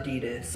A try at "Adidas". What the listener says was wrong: The S is silent. It literally is.